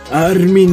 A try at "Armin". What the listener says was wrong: There's only one R!